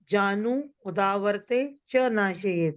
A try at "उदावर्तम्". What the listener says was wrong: उदावर्ते नहीं उदावर्तम है इसमें देखिए